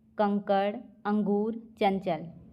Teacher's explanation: इनके उच्चारण में नाक से अधिक हवा निकलती है। मुंह से कम। यह स्वर के बाद आने वाली व्यंजन ध्वनियां होती हैं। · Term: अनुस्वार, अनुस्वार युक्त शब्द